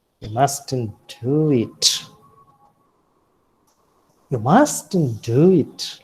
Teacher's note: So when you wish to correct something, at that time, you make use of falling rising tone. And you also have the warning in the falling rising tone. And the warning is, you mustn't do it.